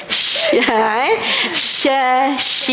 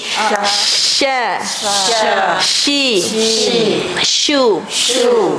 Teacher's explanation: Dekat mana rumah dia? Di tengah lidah. Tolak tengah lidah tu tinggi sikit. Sha, shi, shu.